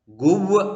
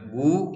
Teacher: ആദ്യത്തെ അക്ഷരം ഗോമാൽ, അതിന്റെ മുകളിലെ സ്വരം ഊ കഴിഞ്ഞ് വാവ് വരുന്നു, അത് ഉച്ചരിക്കില്ല. ഗുവ് എന്ന് ഉച്ചരിക്കില്ല, ഗു എന്ന് മാത്രമേ ഉച്ചരിക്കുകയുള്ളൂ, വാവ് ഉച്ചരിക്കുന്നില്ല